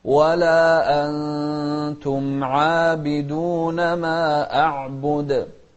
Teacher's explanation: أخفينا النون مع المقدار الحركتين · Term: الإخفاء